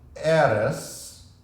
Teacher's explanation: It is eres with the accent on the first syllable, not on the E in the ending.